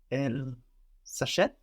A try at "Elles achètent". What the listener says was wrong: zachète. That S between vowels will sound like a Z. Elles achètent. So here we hear the difference now between she buys and they buy because this verb starts with a vowel. Elle achète, she buys, and elles achètent, they buy.